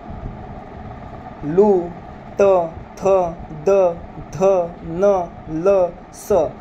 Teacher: तुमची जीभ जी आहे तुमच्या दाताला स्पर्श करते म्हणून त्यांचा दंतेमध्ये समावेश झालेला आहे